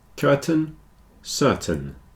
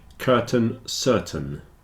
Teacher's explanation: the reason is the stress is on the first syllable so the second syllable tends to get contracted down a bit and in this case it's a little bit like an e